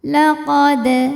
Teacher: Di sini ada hukum qalqalah sugro. Sebab ada dal yang sukunnya sukun asli. Maka ini dibaca dengan pantulan yang kecil. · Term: qalqalah sughra